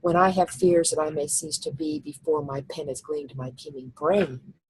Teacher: I didn't stop at the end of the line, I stopped at the end of the punctuation. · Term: enjambment